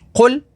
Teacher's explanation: قوف حروف مستعلیہ میں سے ہے تو اسے پر یعنی موٹا پڑھیں گے